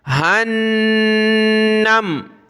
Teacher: اس ہا کو آگے نون کے ساتھ ملائیں گے, نون کو میم کے ساتھ